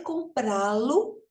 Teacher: essas consoantes são suprimidas, ou seja, elas são retiradas e colocado um L no lugar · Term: arranjo fonético